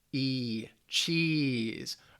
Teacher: And the reason they say this is because then your mouth is wide. It's kind of like you're smiling to say that long E sound. Your mouth is wide, cheese, your tongue is forward, and it's a little higher too. · Your mouth is wide, cheese, your tongue is forward, and it's a little higher too. And that's how you get that long E.